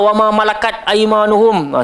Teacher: dekat sini kita nampaklah ada huruf-huruf yang ada padanya sifat hamas hamas ni maksud dia kena keluar angin sikitlah daripada sifat huruf tu yang sebenar